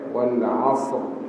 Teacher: Ujung lidah seperti juga huruf sin, dia menghala ke gigi bawah dah. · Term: huruf sad